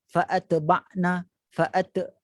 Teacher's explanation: terdapat qalqalah ataupun pantulan ketika menyebut huruf ta yang bersukun